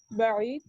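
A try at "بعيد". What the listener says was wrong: بعید، دال کلیئر کریں قلقلہ کے ساتھ. بعید.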